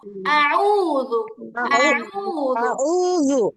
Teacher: যদি এটা মোটা করে প্রেসার দিয়ে পড়তে যান তাহলে আউযু জয়ের মতো মোটা হয়ে যাবে, এটা হবে একদম সফট · জিহ্বার আগা উপরের দাঁতের আগার সাথে লাগবে, জিহ্বাটা হালকা বের হয়ে থাকবে। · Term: জাল